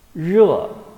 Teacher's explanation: produced by rolling up the tip of the tongue toward the front end of the hard palate. Then let the tongue tip touch the hard palate lightly.